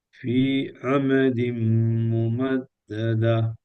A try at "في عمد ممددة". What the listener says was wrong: இப்ப நீங்க நல்லா குறைஞ்சிட்டீங்க. ஃபி ஃபி அல்ல ஃபி அமதின் ஒரு செகண்ட் கொடுங்க. அதோட கூட போகணும்.